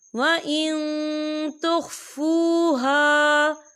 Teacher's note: وَإِن تُخْفُوهَا، وَإِن تُخْفُوهَا، یہ دیکھیں وَإِن، یہاں نون ساکن ہے اور نون ساکن کے بعد جو ہے تا آ رہا ہے، اور تا جو ہے اکفا کا ورڈ ہے تو ہم یہاں اکفا کریں گے، نون ساکن کی آواز کو ناک میں چھپائیں گے